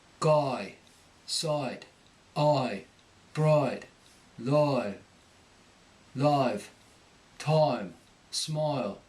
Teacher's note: The long I picks up an R before it.